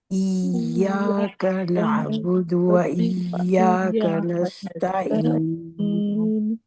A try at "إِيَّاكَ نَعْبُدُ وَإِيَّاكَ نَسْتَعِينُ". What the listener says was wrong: ٹھیک ہے، آپ نے اس یا پہ پریکٹس کرنی ہے، ای یا پہ پریکٹس کرنی ہے، ٹھیک ہے.